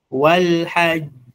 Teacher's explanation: Ikiwa na shadda qalqala unaikaza and then unaiachia.